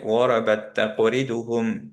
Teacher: গরাবাত একটা তা ছিল, এখানে আরেকটা তা আসছে, এই তাটা সুকুনে ছিল, দুইটা এখন মার্জ হয়ে গেল। এখন মার্জ হয়ে কি হলো, এইটাকে সাদ্দা দিলাম।